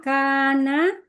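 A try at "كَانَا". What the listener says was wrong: kana, nanya panjang kalau huma.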